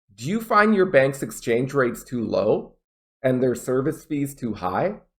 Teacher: Notice that pause before and, because I have a comma.